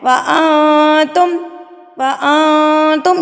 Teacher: نون ساکن کے بعد اگر حروف اقفا میں سے کوئی حرف آ جائے تو آپ نے یہاں پر نون ساکن کی آواز کو ناک میں چھپا لینا ہے